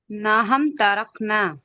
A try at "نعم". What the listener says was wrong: نہ ہم نہیں ہے، نعم، عین ہے، عین، نعم.